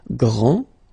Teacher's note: final D is not pronounced